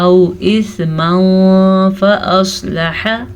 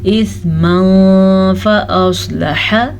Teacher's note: تنوین کے بعد حمزہ ہے حروف حلقی میں سے اور یہ واو لین ہے. اسے ہم نرمی سے پڑھنا ہے, بغیر کھینچے پڑھنا ہے